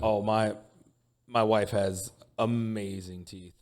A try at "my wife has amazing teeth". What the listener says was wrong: No, but you kind of longed it, like you were.